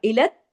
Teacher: बी आई दी कुम इलत तहलुका, इलत तहलुका, इलत तहलुका। अब देखिए लाम जो है वो ता से जुड़ा, इलत, क्योंकि बीच में कोई हरकत नहीं है ना, और ता पे तशदीद है, तो तशदीद की वजह से इलत तहलुका।